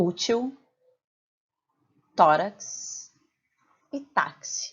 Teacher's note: em todas essas palavras a sílaba tônica está na penúltima sílaba portanto a gente chama ela de paroxítona e e agora quando